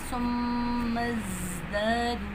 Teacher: زا میں سیٹی کی ساؤنڈ ہے تو سیٹی کی ساؤنڈ نکالنی ہے